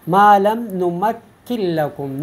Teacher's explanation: نون is completely entered into لام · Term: إدغام تام